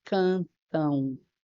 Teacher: Esse encontro vocálico é decrescente, então eu tenho um ditongo decrescente e ele é nasal, porque eu falo cantão, tá? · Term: ditongo decrescente nasal